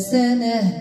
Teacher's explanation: التاء المربوطه كن وقفوا عليها بهاء